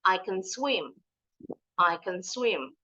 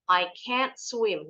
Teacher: Kalau can itu yang positif bunyinya ken. Dan bacanya cepat. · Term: can yang positif